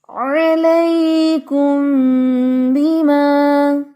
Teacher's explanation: ناک میں وائبریشن بھی ہو رہی ہے کیونکہ میم پر غنہ ہوتا ہے نا، جس طرح نون پر غنہ ہوتا ہے اسی طرح میم پر بھی غنہ ہوتا ہے.